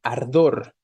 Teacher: La palabra ardor es una palabra aguda porque su fuerza está, su tonicidad está al final, en la última sílaba, ¿no? Pero no se va a tildar porque no termina ni en N, ni en S, ni en vocal, como hemos dicho, ¿no?